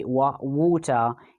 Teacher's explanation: instead of the r sound they are using schwa sound